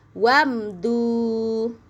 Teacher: Mimnya biasa aja, enggak usah ditahan lama-lama.